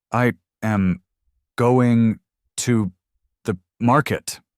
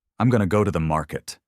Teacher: Native speakers say, I'm going to go to the market. No breaks, no separation, everything woven together in one smooth breath. They don't pause after each word.